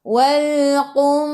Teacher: Matikan dengan lam, hujung lidah menyentuh gusi atas.